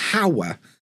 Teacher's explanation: But hour, I think everybody skips the H. I think if you look in the dictionary, it won't have a H at the beginning of the word. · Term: silent H